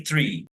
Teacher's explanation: three I say three because I come from West London and in West London we don't we have very very weak th sounds often we change th to F